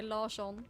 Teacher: if there's an R and an S next to each other in a Swedish word, it makes a sh sound.